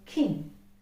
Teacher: by the english alphabet it is a voiceless consonant it's a it's a velar plosive and see it is there in the word king